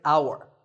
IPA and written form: au-ər (hour)